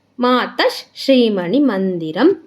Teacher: ಮಾತ ಶ್ರೀಮಣಿಮಂದಿರಂ ಅಂದರೆ ಮಾತ, ತಾಗೆ ಮುಂದೆ ವಿಸರ್ಗ ಇದೆ, ವಿಸರ್ಗದ ಮುಂದೆ ಶ ಇದೆ, ಅದಕ್ಕೆ ನಮಗೆ ಅರ್ಧ ಶ ಆಗುತ್ತೆ. ಮಾತಶ್, ಶ ಅಂದರೆ ಅಲ್ಲಿ ಶಿ ಇದೆ, ಬಟ್ ಅಂದರೆ ಅದು ಶ ವರ್ಗಕ್ಕೆ ಸೇರಿರೋದ್ರಿಂದ ಅಲ್ಲಿ ನಾನು ಶ ಅಂತ ಹೇಳ್ತಾ ಇದ್ದೀನಿ.